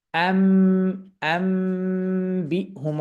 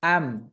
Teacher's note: তাহলে এই যে আম বললে আমরা বুঝতে পারছি যে মিমে সুকুন করেছি, অর্থাৎ নুন সুকুনের পর যখন বা আসে তখন এই গুণনাকালীন সময়ে উচ্চারণটা শোনা যাবে মিমের মতো